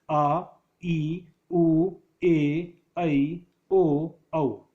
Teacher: जैसा कि हमने देखा, इनके उच्चारण में अधिक समय नहीं लगता, अपितु एक मात्रा का ही समय लगता है। दीर्घ स्वर उच्चारण करते समय मूल स्वरों से दुगुना समय लगता है